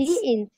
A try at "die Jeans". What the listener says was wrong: ইন্স না, এটাকে জিন্সই বলে। মানে ইন্স একদমই ওইরকম না, জিন্সই বলা হয় আর কি এটাকে নরমালি।